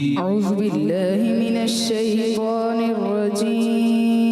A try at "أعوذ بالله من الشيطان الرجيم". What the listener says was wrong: دوبارہ پڑھیں. زال کی ادائیگی کلیئر کریں.